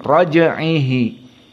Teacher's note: Innahu, dan hu di sini silah 2 harokat, ala matobi'i 2 harokat, raj'ihi, maka jim dalam keadaan sukun, qalqalah as-sughra karena dia di tengah. Raja hanya sekedar sedikit, raj'ihi.